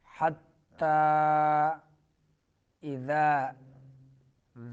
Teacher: حتیٰ اذا ذال حمزہ حلق کے اس حصے سے جو سینے کے قریب ہے اور ذال جو ہے زبان کی نوک جب سامنے دانتوں کے سرے سے لگے تو ذال ادا ہوتا ہے